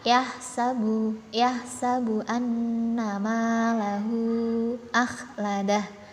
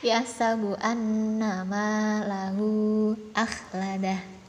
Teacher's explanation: Ketika ini dia huruf di kata ganti hu bertemu dengan hamzah, itu mad silah tawilah.